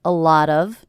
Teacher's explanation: A lot of people ask me, so the first thing I notice is this T is a flap T. It sounds like a D. A lot of. That's because it's coming between two vowel sounds.